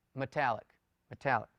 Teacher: It's almost as if you don't pronounce the E, you just run the M into the T. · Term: reduced vowel